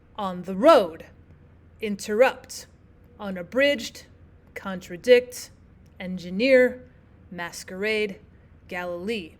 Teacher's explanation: you have two unstressed syllables followed by a stressed syllable · two unstressed syllables and then the stressed syllable is at the end. So if you think of a soft soft and then a hard stressed syllable. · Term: anopestic